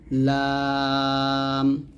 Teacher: কারণে আমাদের কোরআন মাজিদ পড়া শুদ্ধ হয় না লামটা হচ্ছে যে আগার কিনারা সামনের উপরে দাঁতের মাড়ির সঙ্গে লাগিয়ে এই লামটা পাতলা করে উচ্চারণ করতে হবে